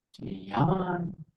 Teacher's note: So you go high and then come back down.